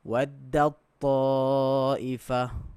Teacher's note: So seolah-olah ta tu hilang teruslah. Masukkan dal ni dalam ta ni tu.